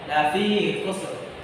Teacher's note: Kemudian ada huruf kha sebelumnya huruf kha yang berharakat dhamma. Maka pada saat itu huruf ra-nya dibaca tebal.